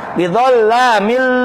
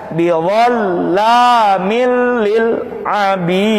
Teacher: Bi dengan la, tidak gunnah dengung. Berarti nggak pakai dengung.